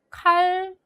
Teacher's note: 니은이 리을의 영향을 받아서 리을로 발음이 된 것을 살펴볼 수 있고요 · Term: 유음화